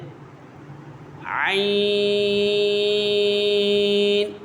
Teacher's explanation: عین یہ حرف حلقیہ ہے، اس کا مخرج ہے حلق کے درمیان والے حصے سے ادا ہوتا ہے۔